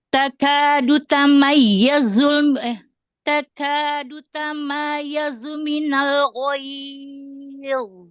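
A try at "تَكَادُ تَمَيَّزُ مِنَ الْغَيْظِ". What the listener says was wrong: Iya-nya dinaber tasydid.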